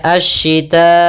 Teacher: Maka apabila ada mad tabi'i bertemu setelahnya huruf hamzah dan hamzah di satu kata, maka kita namakan dengan mad wajib muttasil, panjangnya 4 atau 5 harakat. Maka kita membacanya asyita'i, panjang dulu 4 harakat baru i.